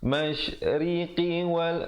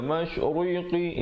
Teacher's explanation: Masyriqi wal ri-nya menjadi nipis. Jangan baca masyriqi, itu jadi tebal.